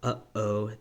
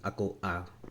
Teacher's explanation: it's not a diphthong. Okay, you pronounce it. There's a glottal stop in between. So between the two vowels, that's o a, right?